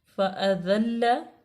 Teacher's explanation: ज़ा पे वैसे सीटी की आवाज़ आनी चाहिए, इसको सख्ती से पढ़ना है। फ़अज़ल्ल, लाम को इसलिए सख्ती से पढ़ा है क्योंकि लाम मुशद्दद है।